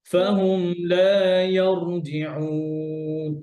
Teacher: জবরের পরে র সুকুন হয়ে র মোটা